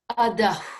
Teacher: So when we express the Visarga, when it precedes a pa or pu, then Visarga, which is usually like this, Visarga is adaha. But when it's followed by a P, that adaha changes to adah, like we're blowing something, as though we were blowing a feather away